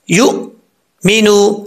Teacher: حمزہ کا ہی ساؤنڈ ہمیں پڑھنا پڑے گا، یؤمنو، لیکن یہاں پر حمزہ جو ہے وہ ساکن ہے تو جھٹکے کے ساتھ پڑھیں گے